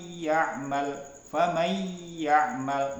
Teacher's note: tanwin itu dimasukkan menjadi satu ya dengan huruf yang sesudahnya ditasdidkannya ya kemudian ee dibaca dengan mendengung